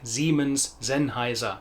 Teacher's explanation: the S sound being more like a Z when it's in front of a vowel